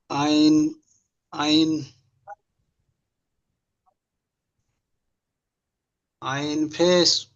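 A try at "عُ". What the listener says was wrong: উ। পেশ। উ। আইনের উপরে পেশ এসেছে। তাড়াতাড়ি পড়তে হবে, টান দেওয়া নিষেধ।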